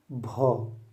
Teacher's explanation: ये महाप्राण होगा, ओष्ठ से बोला जाने वाला होगा और घोष होगा